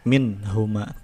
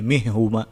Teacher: nun sukun bertemu dengan ha, hukumnya adalah izhar. Itu nunnya dibaca jelas. Minhuma, tidak dimasukkan, tidak jadi mihuma, enggak.